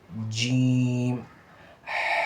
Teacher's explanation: جب جیم پڑھیں گے تو ہونٹ گول ہوں گے